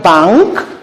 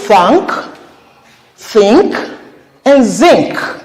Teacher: The N that precedes this K is a velar nasal.